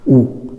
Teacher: ऊ बोलते हैं तो कहाँ से है, जो होठ है हमारे एक थोड़ा सा गोल बनाते हैं, ऊ, तो होठों से, इसका उच्चारण कहाँ हो रहा है, होठों से ऊ।